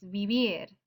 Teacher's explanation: It's vivir. Stress is on the last syllable, vivir.